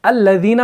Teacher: आपकी जो नोक होती है जुबान की, जिसे हम रअस लिसान कहते हैं, वो थोड़ी सी बाहर रहती है। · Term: ज़ाल